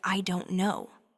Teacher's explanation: That T sound in don't actually often changes to an R sound when it links with no. So you're not actually pronouncing a hard T sound.